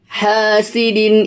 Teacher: izhar halq yang dibaca jelas enggak panjang enggak dengung enggak samar-samar